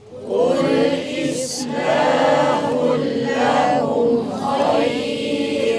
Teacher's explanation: Idgham bila gunnah, masukkan bunyi tanwin ke dalam huruf lam tanpa dengung.